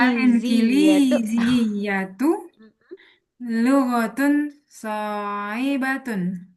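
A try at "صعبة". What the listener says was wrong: Nggak pakai so'ibah, tapi so'bah. So'batun. So'bah apa? So'bah.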